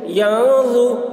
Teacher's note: نون ساکن کے بعد حروف اخفا میں سے ظا آ رہا ہے، اس لیے نون کی آواز کو ناک میں چھپا کر پڑھیں گے، اس کو اخفا کہتے ہیں